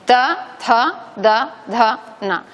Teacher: Es el ápice de la lengua tocando los alveolos dentales, si queréis las encías.